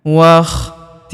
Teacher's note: Hamzah penyambung antara kata sebelumnya dan kata setelahnya. Waktilafil huruf la kita panjangkan dua harakat karena terdapat alif di depannya. Waktilafil huruf langsung sambung ke huruf lam yang berharakat tasydid.